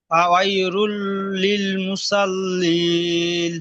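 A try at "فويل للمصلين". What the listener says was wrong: আবার রুল পড়েন, লুল বলেন, লাম লাম দুপেশ লুল।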